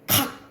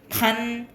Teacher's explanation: 여러분 코 잡고 나중에 코 해석 받고 간, 각 이렇게 해보면 각은 안 울려요. 근데 간은 울려요. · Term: 울림 소리